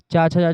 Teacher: च, छ, ज य तालु से निकलता है। तालव्य व्यंजन है।